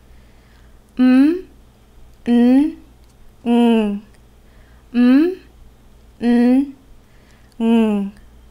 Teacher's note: Are nasal sounds. The sound goes into the mouth and out of the nose.